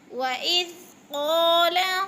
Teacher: قاف کے اوپر الف مدہ کھینچ کر پڑھیں گے تھوڑا سا